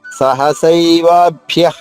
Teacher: వా దీర్ఘంగా, భ్యాలోని భా 2 భాలు అవుతుంది. అలాగే హన్యంత హా పైన ఆఘాతము, న్యాలోని రా నా 2 నాలు అవుతాయి.